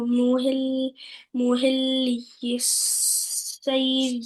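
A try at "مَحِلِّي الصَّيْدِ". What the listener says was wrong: صویدی صاد موٹا پڑھیں، SAW والی پروننسیشن، SAW سا. I saw you yesterday in park. محل الصيد. محل الصيد میم ہے.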